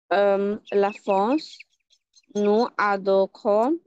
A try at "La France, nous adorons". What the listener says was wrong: নুজাদহ, এখানে লিয়াজ আছে, নুজাদহ